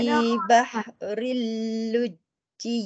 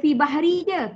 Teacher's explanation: bahri tu lekat kat lam sebab jumpa sabdu